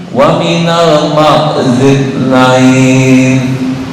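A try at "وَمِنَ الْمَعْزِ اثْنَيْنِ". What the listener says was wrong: Belum. Ini hampir ke zal nih. Tadi bacaannya. Ini lepas ya. Ma'zid nain. Ma'zid. Nah, itu tertahan. Lepas, ini tertahan. Minal do'nit naini wa minal ma'zid nain. Ma'zid Ma'zid nain.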